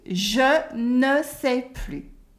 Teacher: the S at the end of plus is silent because this is not anymore. Okay? When you say the S, it means more.